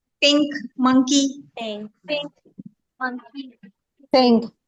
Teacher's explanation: आप एन के लिए मखरज तो नहीं ले रहे, नून के लिए मखरज नहीं ले रहे, मगर आप उसमें खाइशूम में से आवाज निकाल रहे हैं। · गुन्ना हो रहा है इसमें से, यानी कि जो है वो खाइशूम से तो आवाज निकल रही है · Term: इख्फा